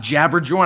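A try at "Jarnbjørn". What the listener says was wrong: It's Yarnbjorn, man. Jabberjorn. It's Yarn. They're pronounced as Y's, man.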